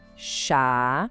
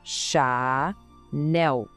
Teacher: Não é para falar Chanel, como se fosse em inglês, tá? O foco é total no nel. O som do L é bem marcado e a força da palavra tá ali. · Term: sílaba final